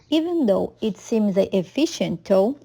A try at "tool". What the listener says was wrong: yeah, again, you need to make that vowel longer. Tool. Notice the rounding of the lips there. Tool.